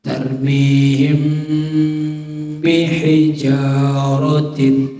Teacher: Apabila ada mim sukun bertemu dengan huruf ba. Contohnya tarmihim bihijaratin, ya. Tarmihim bihijaratin, ya. Mimnya tetap dibaca konsonan M. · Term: ikhfa syafawi